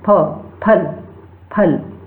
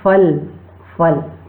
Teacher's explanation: जब हम फ का उच्चारण दोनों ओष्ठ को मिलाकर करेंगे तो हम बिल्कुल शुद्ध उच्चारण करते हैं फ, फल, फल। यदि हम दोनों ओष्ठ मिलाकर फ का उच्चारण नहीं करते हैं तो उसका उच्चारण अशुद्ध रूप से करते हैं फल, फल।